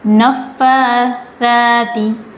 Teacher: نفاثاتی، سا جیسے ہم نے ذال کا مخرج پڑھا ہے نا، زبان کی نوک سامنے کے دو دانتوں کا کنارہ، اسی طریقے سے سا کا بھی مخرج ادا ہوگا